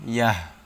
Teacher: গোলতা থাকলে গোল তাকে হা উচ্চারণ করতে হবে